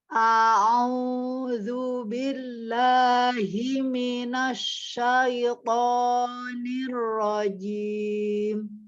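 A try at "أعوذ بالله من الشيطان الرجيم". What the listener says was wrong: Nah, mimnya itu lunak. Tadi ya udah dikasih tahu ya. Jadi jangan dibanting mimnya minas, tidak. Himinas. Supaya apa? Supaya kita untuk tafasi di huruf sinnya itu mudah. A'udzu billahi himinas, tidak himinas. Nah, tidak himinas syaitonir rajim.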